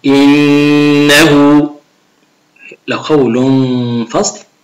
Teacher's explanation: النون والميم المشددتين فيهما غنة مقدار 2 حركات